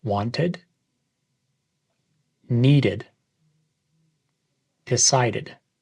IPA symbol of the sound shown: ɪd